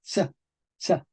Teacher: esta C con colita en español medieval se pronuncia tsa, tsa